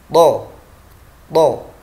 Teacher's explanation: memiliki sifat yang pertama suara atau nafas dan suara tertahan, jahar dan syiddah sekaligus. Nafas dan suaranya tertahan.